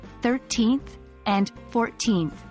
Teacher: in 13th and 14th, the stress is on the first syllable, not the second.